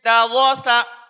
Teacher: دھیان رکھا جائے، جیسے پہلا لفظ لکھا ہوا ہے دووسا، اب طلبہ اس میں کیا کرتے ہیں کہ دووسا را میں ہونٹ گول کرتے ہیں اور سین کو صفائی سے ادا نہیں کرتے ، جیسے دووسا، تو ہم کو را صحیح ادا کروانی ہے